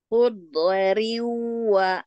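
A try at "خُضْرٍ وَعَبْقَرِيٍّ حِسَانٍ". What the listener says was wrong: jangan mantul. Hu ditahan dulu, do-nya di geraham. Hu hu riu.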